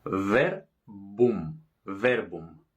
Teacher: bilabial porque tocan los dos labios